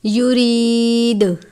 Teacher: لفظ کے آخر میں دال ہے، حروف قلقلہ میں سے قلقلہ کرتے ہیں۔